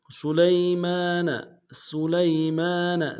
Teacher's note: سین کی سیٹی باریک ہوگی ، لام کو یا کے ساتھ ملانا ہے، یا لین بغیر · لام کو یا کے ساتھ ملانا ہے، یا لین بغیر کھینچے پڑیں گے